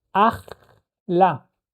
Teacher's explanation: the second root letter, right, the chaf, is the one that gets the shva and creates a second syllable